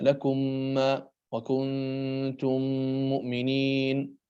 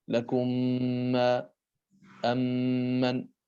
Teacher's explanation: فإذا وقع بعد الميم الساكنة ميم متحركة وجب الإدغام بغنة، فينطق بالميم الثانية مشددة